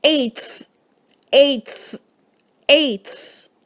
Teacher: the influence of the final dental sound causes a dental articulation of the t sound